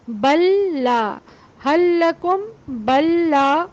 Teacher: یہ دو لام تھے لیکن تجدید دوسرے لام پر آئی اور دوسرا زبر کے ساتھ ہے تو یہ ایک لام محسوس ہوا